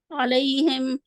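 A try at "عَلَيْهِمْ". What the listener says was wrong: मोटा नहीं करना। बारीक है, मुंह खोले। अलैहिम वैसे भी जबर वाले हैं तो उसके लिए मुंह खोला जाता है, ठीक है।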